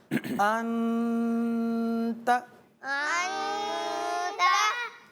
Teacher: ये इख्फा है, लिहाजा नून की आवाज़ को छुपा कर अदा किया जाएगा